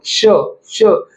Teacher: श श, जिभेच्या मागे तुमचे, दातांच्या मागे तुमची जीभ लागेल, त्याचबरोबर मागील भाग हा टाळूला लागेल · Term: दंत तालव्य